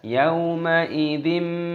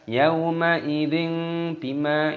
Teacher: Nah, kasrah tanwin bertemu dengan huruf ba di sini. Ini hukumnya dibaca iklab. Iklab itu artinya mengganti, diganti dengan mim. Makanya di sini ada mim kecil, dibaca yauma idzim seperti huruf mim, bukan dibaca Yauma idzin bima itu salah, tapi diganti dengan mim.